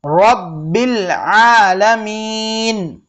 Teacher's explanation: رو کو پر پڑھنا ہے اور با پر تشدید ہے